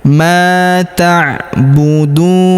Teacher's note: Huruf du kita panjangkan 2 harokat karena waw sukun di depannya,